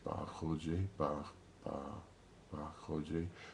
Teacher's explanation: So if you want to really try to practice and try to get an approximation of how the B sound was in the 1830s, just try to say ba khoje, ba ba ba khoje. Try to say it like a P, but without the puff of air. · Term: unaspirated P